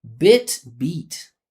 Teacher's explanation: Doesn't matter how long I make the sound. It sounds different because of the tongue position.